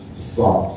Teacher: Safir diistilahkan safir oleh para ahli seperti siul burung di hutan, di pohon-pohon besar. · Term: sifat safir